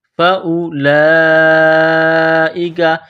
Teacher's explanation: فأولئک، یہ لمبی مد ہے، 4 الف کی لمٹ میں کھینچنا ہے، کاف کو باریک کرنا ہے